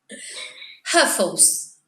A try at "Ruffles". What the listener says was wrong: Yeah, like the R is different. You say Huffles, then you say Ruffles.